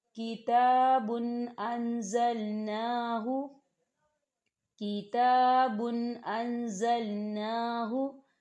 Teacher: तनवीन है और तनवीन के बाद हमज़ा आ रहा है। तो यहाँ तनवीन की आवाज़ को सिर्फ ज़ाहिर किया जाएगा, गुन्ना नहीं किया जाएगा।